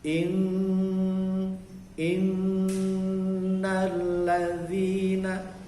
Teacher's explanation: Jadi di atas nun ada tasdid seperti itu atau syiddah, maka nunnya didengungkan dahulu, lama di situ, 2 harokat.